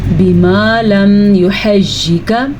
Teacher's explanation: یہ اظہار شفی کا میم ہے، یعنی یہاں پہ غنہ نہیں کر سکتے. یحجکا میں یا اور حا ان کی حرکات کا خیال رکھنا ہے.